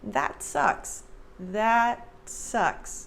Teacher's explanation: And for the American pronunciation, notice that I don't say that. There's no air released at the end of that T.